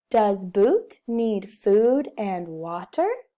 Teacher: Our voice goes up at the end. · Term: questioning